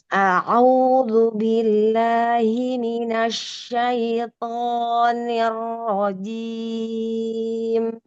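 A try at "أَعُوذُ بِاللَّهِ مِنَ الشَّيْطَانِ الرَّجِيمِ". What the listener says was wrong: U-nya bagus, A-nya bagus. Du, tipiskan lagi pada duzu. Au duzu, duzu tipiskan duzu. Lalu th lepaskan suaranya.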